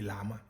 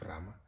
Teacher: some people um especially the older people would say Lama instead of Rama uh due to the struggle in pronouncing the uh the sound